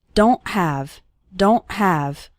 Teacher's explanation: it's more of a stop at the back of your throat the sound cuts off very suddenly